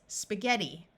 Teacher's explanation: GH has a hard G sound of G in this word the I is going to take on a long e sound